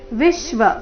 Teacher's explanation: ವಿ ಮೇಲೆ ಆಘಾತ ಮೂರ್ತೆ ಎರಡು ಅಕ್ಷರ ದೀರ್ಘ